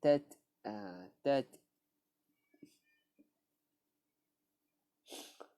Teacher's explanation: Ta bila mana mati, dia ada hukum kita panggil adalah hamas ataupun ada keluarkan angin sedikit. Dia bukannya qalqalah Dia bukan qalqalah macam huruf ba, jim, dal, qaf, ta.